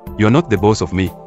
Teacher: the phrase was pronounced with a marked stress on the first and last words